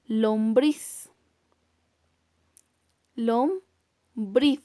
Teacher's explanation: Su mayor intensidad de voz está en la última sílaba, por lo tanto también pertenece a las palabras agudas.